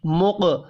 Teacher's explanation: مق قاف ساکن ہے، قلقلہ کرنا ہے۔